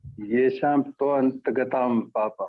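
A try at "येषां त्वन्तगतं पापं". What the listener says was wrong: Again, twant. What is twant? Twanta. Read properly. Twant means you are breaking it.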